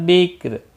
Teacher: بکر را ساکن ہوگا وقف کی صورت میں اور باریک پڑھا جائے گا۔ باریک اس لیے پڑھا جائے گا، را ساکن سے پہلے ساکن حرف ہے اور ساکن حرف سے پہلے زیر ہے، اس لیے را ساکن باریک پڑھا جائے گا۔